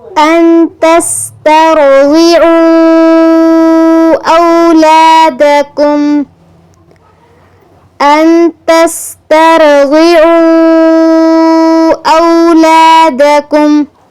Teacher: تسترضعوا را اور غاد ان دونوں پر تفخیم کرنی ہے